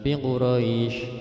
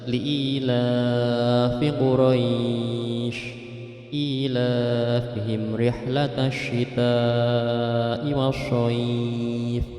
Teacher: ada bacaan mad layin, itu wajib dibaca panjang. Li'ila fi Quraisy, bukan fi Quraisy, terlalu pendek, jadi baca li'ilafi Quraisy ilafihim rihlatash syita'i wasyayf.